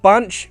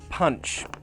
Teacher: you should not feel the paper move for the /b/sounding words But the paper should move for the /p/ sounding words